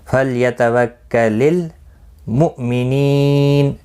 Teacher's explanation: حمزہ ساکن کو جھٹکی کے ساتھ پڑھیں گے، لام ساکن کو ہلانا نہیں۔